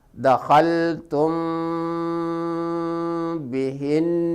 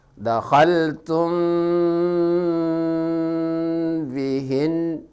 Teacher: Cara membaca ikhfa syafawi yaitu samar-samar. Artinya pada saat membaca mim sukun disamarkan antara mim dan bah dan terdengar seperti didengungkan